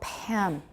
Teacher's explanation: after the release we have some aspiration